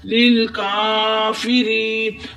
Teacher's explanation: را کے نیچے زیر ہے تو اس کو بریک پڑھیں گے، جب زبر آتی ہے پیش آتی ہے پھر موٹا پڑھتے ہیں، بریک را کے نیچے زیر ہے تو اس کو باریک پڑھیں گے۔ لیل کافری، ری پر یا مدہ ہو رہا ہے، یا ساکن اس سے پہلے زیر تو یہ ایک الف کی مقدار کھینچ کر پڑھیں گے۔ لیل کافری، نون کے اوپر زبر ہے، نا بغیر کھینچے پڑھیں گے، لیل کافری نا، مگر ہم ادھر وقف کریں گے، وقف کی صورت میں نون ساکن ہو جائے گا اور نون کا زبر ختم ہو جائے گا۔